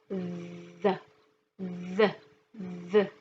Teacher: Remember, TH sound has many different sounds, but for today it's only like the D sound, but you have to put out your tongue